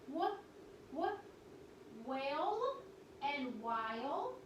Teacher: our one sound with the WH that we learned is a little bit breathy